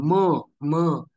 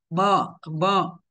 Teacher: म या व्यंजनाचे उच्चारण करण्यासाठी आपल्याला फक्त नाकाचं साहाय्य लागत नाही तर मुखाचं सुद्धा साह्य लागतं मुखसहित नाकामधून म या व्यंजनाचं उच्चारण होतं बरोबर जसं की पहा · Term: अनुनासिक, अनुनासिक व्यंजन